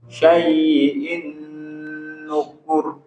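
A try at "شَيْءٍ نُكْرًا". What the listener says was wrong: Lin itu nggak boleh ditempo. Syai'in nukur. Begitu. Jadi huruf ya itu lin itu nggak boleh ditempo, nggak boleh. Syai'in nggak boleh ya. Tapi syai'in nukur.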